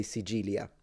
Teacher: some people that live more like in the south of Sicily, areas like Agrigento and that area right there, pronounce the C like a G. So they'll say Sigilia like a G.